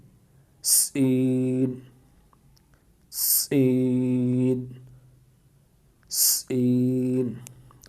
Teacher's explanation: زبان کی نوک کو سامنے والے نیچے کے دو دانتوں کے کناروں سے مضبوطی سے لگا کر باریک اور سیٹی جیسی آواز میں پڑھیں، یعنی سین سین سین۔